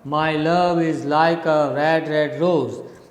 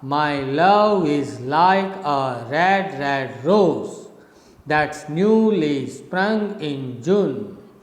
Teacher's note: it's a rising rhythm from down you go up